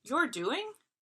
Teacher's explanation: That rising intonation, I would still understand the implied what.